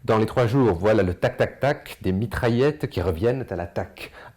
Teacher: une allitération en dentale avec le son t ainsi que un son occlusif avec le Son C prononcé k